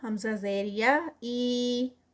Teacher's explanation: یہ تھوڑا سا لمبا ہوگا، اس کا اسٹریچ 2 کاؤنٹس کا، کیونکہ یہ یا سے پہلے زیر آ گئی ہے تو اس کو ہم لیٹر ہے یعنی یا مد ہے یہ، تو اس لیے اس کو حمزہ زیر یا ای ادا کیا جائے گا، اس طرح سے اس کو ادا کیا جائے گا۔